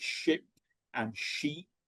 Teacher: it takes longer for me to say the second one, although the mouth shapes are the same. And they may get one is a short vowel, one is a long vowel sound as well.